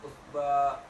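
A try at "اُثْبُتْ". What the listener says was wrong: usbut. Usbut. Di akhirnya kan tak usbut. Usbut. Tak di akhir. Usbut. Usbut.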